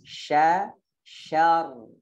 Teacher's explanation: Tapi sya-nya jangan syar. Sya-nya ikut tebal, enggak. Sya-nya tetap tipis.